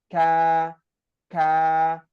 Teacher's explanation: huruf Kaf itu dia masih di Pangkal pangkal lidah tapi sedikit ke depan dari tempat keluarnya huruf q